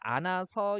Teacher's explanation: 히읗 빠지고 니은 그대로 이어서 발음하면서 안아서 이렇게 되죠